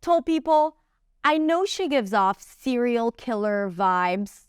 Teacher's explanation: 'I know she gives off' - that's kind of reduced because she goes a little faster and reduces things inside. 'I know she gives off serial killer vibes' - stress, stress, stress.